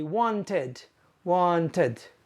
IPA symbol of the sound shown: ɪd